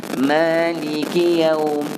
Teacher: Jadi jaga kaf, jangan ada sabdu atas kaf.